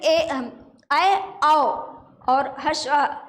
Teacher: ए अ ऐ औ और ह्रस्व अ ये आधा खुला हुआ मुंह रहता है जब इनकी ध्वनि बाहर निकलती है